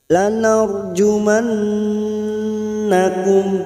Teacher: ra sukun yang sebelumnya fathah, ra sukun kita baca tafkhim atau tebal